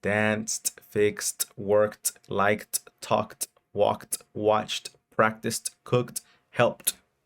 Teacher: la t no es una sílaba es un sonido